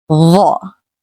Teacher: Dhaa also has no exact English equivalent. Dhaa is a heavy the sound, much thicker than the usual the in the word that. It's pronounced with more tongue pressure.